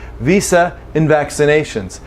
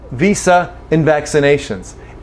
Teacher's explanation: I might have very little vowel in and. In and also can lose the D. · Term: reduced